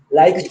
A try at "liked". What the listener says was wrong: You don't say the ED, you have to be liked.